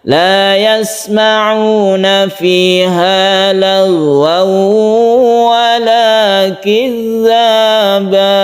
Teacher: tanwin bertemu dengan wawu, ini idgham bi gunnah